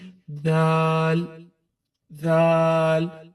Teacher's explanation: अब जो दाल है उसमें सीटी की आवाज को बिल्कुल भी नहीं लाना।